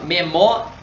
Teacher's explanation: repare que dentro desse ditongo, desse I, desse A, o A saiu mais forte do que o I. Então, repare que o som desse ditongo ele aumentou. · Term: ditongo crescente